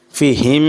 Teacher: মিম সাকিনে ইজহার গুন্নাহ ছাড়া স্পষ্ট হবে